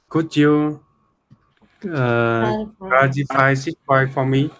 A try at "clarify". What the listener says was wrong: There's no D. It's just R. Clarify.